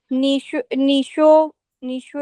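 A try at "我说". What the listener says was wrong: शोई नहीं, ये लफ्ज है, शो है, शो। इंग्लिश वाला एस एच ओ डब्ल्यू।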